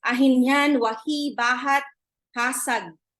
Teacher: The glottal fricative h, for example, is a sound that's very common in Itawit.